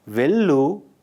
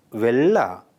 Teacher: Where the final u is dropped